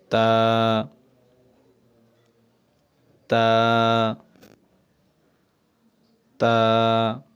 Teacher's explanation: তা বলার সময় কিন্তু আমরা এক আলিফ টেনেছি